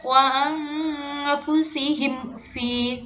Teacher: Ini mem sukun bertemu dengan fa, berarti maksudnya idhar syafawi.